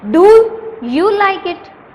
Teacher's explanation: for example جب ہم اس کو بولیں گے تو ہم کہتے ہیں ڈو یو لائک اٹ، یعنی ڈو پہ سٹریس کیا ہم نے، ڈو کو تھوڑا سا اونچا بولا، یو لائک اٹ ہم نے اس کو سمپلی آرام سے بول دیا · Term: انٹونیشن